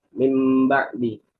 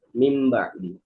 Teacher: Maka eh ketika digabung itu min ba'di sebelum huruf bnya itu disempilin dulu ada huruf mim. Jadi mim ba'di bukan min lagi bukan pakai nun tapi dijadiin mim. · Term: iqlab